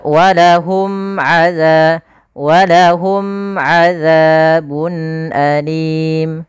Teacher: Cara membacanya tidak boleh ditahan karena dia izhar jelas. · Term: izhar syafawi